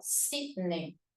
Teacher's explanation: Si llega la mayor fuerza de voz en la penúltima sílaba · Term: grave